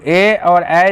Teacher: कंठ और तालु, ए और ए जो है कंठ से निकलते हैं, इसका नाम है कंठ और तालु, यानी कंठ तालव्य भी इसे कहते हैं। ध्यान में रखना, ए और ए कंठ तालु से निकलता है।